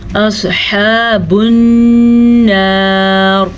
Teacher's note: صاد کو پر پڑھنا ہے